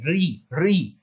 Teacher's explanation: जब हम री बोलते हैं तो हमारी जीभ पीछे को मुड़ती है, हमारी जो जीभ का जो ऊपर का जबड़ा वाला हिस्सा होता है, तो उसमें पीछे की तरफ लगती है री री, तो वहां पर लगती है तो उसे कहा जाता है मूर्धा। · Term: मूर्धन्य